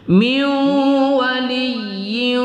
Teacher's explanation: nun sukun bertemu wau kita dengungkan pada idgham maal gunah